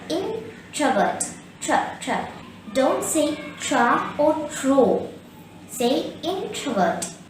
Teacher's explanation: they are unsocial the word introvert has three cells in word the second syllable contains a schwa